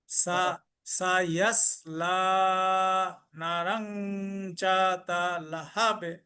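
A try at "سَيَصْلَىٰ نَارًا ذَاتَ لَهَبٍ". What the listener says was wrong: সায়াস লা আর না তে টান আছে, না রং যাতা না,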